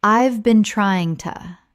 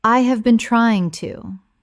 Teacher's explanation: When spoken naturally, the H in have often disappears and the words run together.